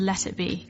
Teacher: sometimes in American English people say let it be almost like a d